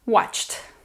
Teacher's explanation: Ch, ch is not vocalized, so the ed sound is t.